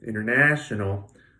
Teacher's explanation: you hear the third syllable much more clearly than the other ones and that's the stressed syllable